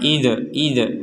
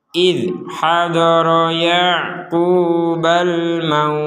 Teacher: Di sini dzal sukun ya. Dzal sukun ini juga jangan sampai dipantulkan karena ini huruf dzal.